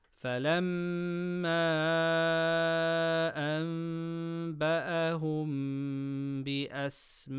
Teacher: Stretch letter before hamza in the same word. Mad muttasil, 4 harakas. · Mad munfaṣil, 4 harakas. Noon sakina before ba, qalb with gunna. Mim sakina before ba, ikhfa shafawi with gunna.